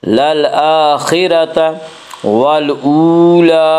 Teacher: للآخرۃ والاولی، وا مدہ وہ وا جو ساکن ہو اور اس سے پہلے پیش ہو، وا مدہ کو 1 الف کے برابر کھینچ کر پڑھیں گے۔ والاولی، لام کے اوپر کھڑا زبر ہے، کھڑا زبر کو 1 الف کے برابر کھینچ کر پڑھیں گے۔